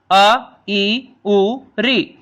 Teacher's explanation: जिन स्वरों के उच्चारण में एक मात्रा का समय अर्थात सबसे कम समय लगता है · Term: ह्रस्व स्वर